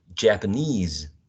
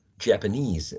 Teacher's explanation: The word stress falls into the last syllable